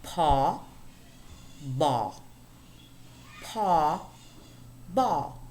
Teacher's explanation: we have sets of sounds which differ from one another simply in terms of voicing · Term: voiced voiceless